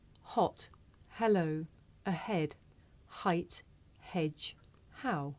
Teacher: this is a voiceless consonant it makes very little sound because it's really just your breath you can hear it at the beginning of the word here